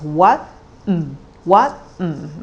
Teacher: so it's rising and low tone